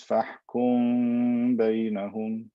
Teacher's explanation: So instead, I add extra ghunna to the mim, ikhfa shafawi. I elongate the m sound with a ghunna to make it easier to pronounce.